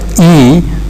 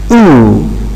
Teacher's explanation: Now if you produce E, this one in here, E, you notice that your lips are being spread, as opposed to the production or articulation of U. You notice that your lips are rounded.